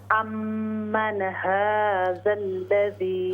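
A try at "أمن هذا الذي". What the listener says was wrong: ہاں جی، نون پہ غنہ، اس کو باؤنس بالکل نہیں کریں گے ہم۔ امن، یہ غلطی ہوگی، ہم پڑھیں گے امن ہا،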